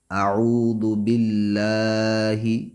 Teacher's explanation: ہا کو نہیں کھینچیں گے، فقط زیر ہے۔ مینش، میم کو بھی نہیں کھینچیں گے، نون کو شین سے ملائیں گے۔